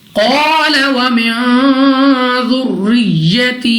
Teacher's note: قال ومن ذریتی، قاف مستعلی میں سے ہے اٹھا پڑھیں گے، الف سے پہلے زبر الف مدہ 2 سیکنڈ تک لمبا کرنا ہے، نون ساکن کے بعد دال حروف اخفا میں سے ہے، اخفا کا قاعدہ غنہ کر کے پڑھیں گے، یا ساکن سے پہلے زیر یا مدہ اور اس کو 2 سیکنڈ تک کھینچ کر پڑھا جائے گا